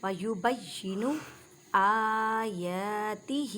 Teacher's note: وَيُبَيِّنُ آيَاتِهِ، ہا کے نیچے کھڑی حرکت، ہا کو ایک الف کی مقدار میں کھینچ کر پڑھیں